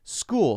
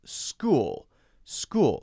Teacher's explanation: this one has the s followed by a K sound even though it's CH school school okay so these should be not too difficult easy